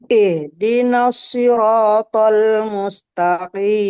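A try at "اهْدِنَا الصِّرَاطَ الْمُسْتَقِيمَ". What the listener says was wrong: Huruf shotnya jangan dimonyongkan, Bu. Ihdinas si, bukan ihdinas si, bukan, tapi si. Pangkalnya dinaikkan sehingga tidak dimonyongkan.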